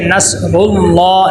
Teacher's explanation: لفظ اللہ کو موٹا کیا تھا کیونکہ اس کے پیچھے پیش آ گئی تھی، تو اب یہاں پہ کیا آ گیا، پیچھے زیر آ گئی، اس کو بری کر کے پڑھیں گے.